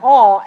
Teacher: it is not a glide vowel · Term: open oh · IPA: /ɔ/